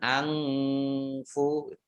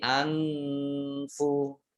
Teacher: ikhfa itu jangan pakai eng